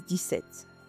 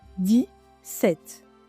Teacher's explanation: in dix-sept you don’t really hear the x sound